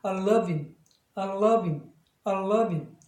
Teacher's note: 실제로는 대명사에는 액센트가 없습니다. 그래서 가급적이면 그럴 때는 H 발음을 묵음처럼 하는 게 좋습니다